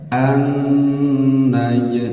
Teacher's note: Nun bertasdid tahan dua harakat ya cara menghitungnya Sebutkan annya baru ditahan dua harakat anaj seperti itu